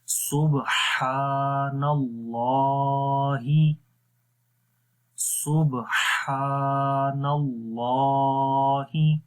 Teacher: ہی کو لمبا نہیں کریں گے، ہا کے نیچے زیر ہے۔ سبحان اللہ، سبحان اللہ۔